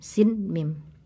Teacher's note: mim itu ada gunah m gitu kira-kira tiga ketukan